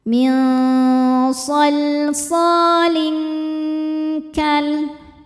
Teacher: Cara bacanya tanwin disamarkan ke kaf disertai dengung dan dengungnya banyak karena kaf makhrajnya jauh dari nun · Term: ikhfa hakiki ab'ad